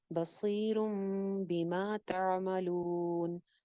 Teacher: بصیرن تھا, بصیرن, تنوین کے بعد آ گئی ہے با, با جب آ جاتی ہے نون ساکن یا تنوین کے بعد تو کیا ہوتا ہے, نون کی آواز میم میں چینج ہو جاتی ہے. جیسے کہ یہاں پہ آپ کو ایک چھوٹی سی میم دکھائی دے رہی ہے, تو یہ کیا ہو جائے گا, را پیش میم روم ہو جائے گا, نون کی آواز میم میں بدل گئی ہے.